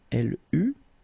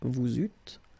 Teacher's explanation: You don't pronounce it like normally we would pronounce it e, okay, but we will pronounce it u all the time.